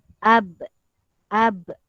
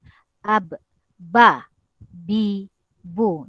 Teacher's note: dia mempunyai sifat juga, sifat qalqalah di mana apabila dimatikan dia lantun